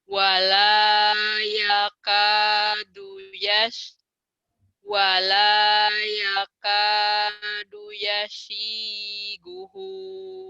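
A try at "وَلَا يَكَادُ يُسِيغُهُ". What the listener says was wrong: bukan yasi, dilihat lagi. Tapi yusi. Wala yakadu yusiguhu.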